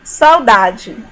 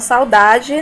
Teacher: nós sabemos que o A sempre será vogal e o U, ele tem aí um som fraco, né? Então, nós temos uma vogal mais uma semivogal. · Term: ditongo decrescente